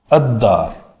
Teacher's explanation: یہ لام کا اس دال کے اندر ادغام ہو جائے گا قریب المخرج ہونے کی وجہ سے